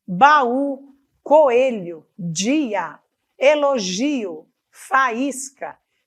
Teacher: O que importa é que são duas vogais, encontro de duas vogais que são pronunciadas separadamente. Isto é um hiato.